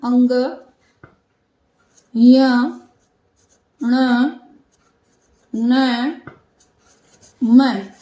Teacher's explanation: जब हम इनको बोलते हैं तो हमारे नाक में एक गुंजन सा होता है इसलिए यह नासिक कहलाते हैं उसके बाद आगत वर्ण है अ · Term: नासिक के व्यंजन